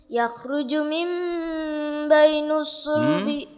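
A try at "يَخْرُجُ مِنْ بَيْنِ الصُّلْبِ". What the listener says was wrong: Coba ulang. Yakhruju min bainis bukan bainus.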